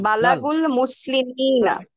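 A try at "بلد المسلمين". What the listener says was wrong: দাল ম্যাডাম, বালাদুল।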